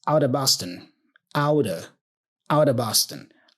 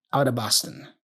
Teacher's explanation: the of is reduced to a schwa sound. Literally, So out of becomes outer.